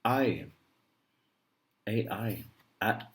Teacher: AI. The tone goes down like this. Fourth tone.